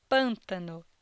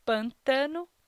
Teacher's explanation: a sílaba dessa palavra que possui maior intensidade na pronúncia é a sílaba pân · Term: sílaba tônica